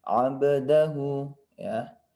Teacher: Ba di sini adalah huruf qalqalah. Maka wajib untuk dipantulkan.